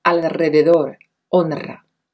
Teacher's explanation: la palabra como por ejemplo en rico roberto ropa y luego la vibrante múltiple se pronuncia en el ataque de la sílaba después de una l o n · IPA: /r/